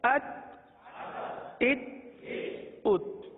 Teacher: इस हर्फ में, हर्फ ता में कलकला नहीं होगा। आवाज को जमा कर पढ़ें, अत, इत, उत।